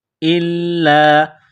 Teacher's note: حمزہ کو لام کے ساتھ ملانا ہے، لام میں سختی کرنی ہے